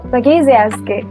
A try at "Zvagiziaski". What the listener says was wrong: You were very close. You missed the Z at the beginning. Zvagiziaski. Zvagiziaski.